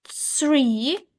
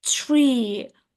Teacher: when they want to say three, they may drop the h and just say tree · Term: th sound